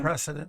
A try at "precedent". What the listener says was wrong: Sounded like you said president. Precedent.